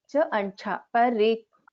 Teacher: The Mahaprana in the second cha. This letter has to be heard. Cha and cha.